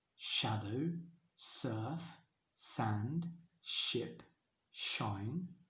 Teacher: all those s or SH sounds especially the beginning of the word it's called sibilance